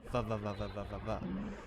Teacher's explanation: with the bottom lip pushed up to the top teeth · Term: V sound